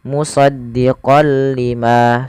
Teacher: Jadi kita hanya memasukkan saja tanwinnya kepada huruf lam dan tidak ditahan. Tidak dibaca dengan musaddiqal lima, tapi hanya musaddiqal lima seperti itu. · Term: idgham bila gunnah